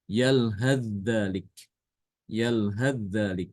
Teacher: Maka di sini Ibnu Katsir dia berbeda dengan Imam Hafs, di mana Imam Hafs kalau membaca ini adalah dengan mengidghamkan ta ke dal. Ya, jadi ta-nya dihilangkan, dimasukkan ke dalam dal.